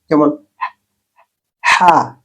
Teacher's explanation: এই অক্ষরটা হা, এর উচ্চারণে কোনো আওয়াজ নেই। এটা এক ধরনের নীরব নিঃশ্বাসের মতো শব্দ। মাখরাজ গলার মাঝখান উচ্চারণ খুব হালকা।